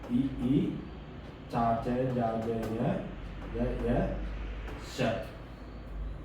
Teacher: දිවේ මැද කොටස තල්ල වෙත සමීප වීම නිසා උපදින අකුරු ඒවා අපි තාලුජ කියලා හඳුන්වනවා මොනවද මේ ඊ චා ච ජා ජ ය ෂ ඊළඟට මූර්ධ ජාක්ෂර කියන්නේ මොනවද? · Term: තාලු ජාක්ෂර